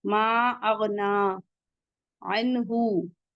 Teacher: मा अगना अन्हु, आइन हलकी से है, नून साकिन के बाद हा आया हुआ है, हमजा हा आइन हा गैन खा है, तनवीन या नून साकिन के बाद तो इजहार हल्की होता है, कोई गुन्ना कोई इख्फा नहीं होगा